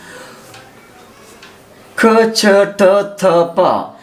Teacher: ఇందులో క చ ట త ప అ అనే వర్ణములు అల్ప ప్రాణములు కొద్దిగా శ్వాసను ఉపయోగించి పలికేటువంటివి క చ ట థ ప వీటికి మహా ప్రాణములని పేరు ఎక్కువ శ్వాసను ఉపయోగిస్తాయి